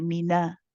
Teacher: the fatha on the noon needs to be lighter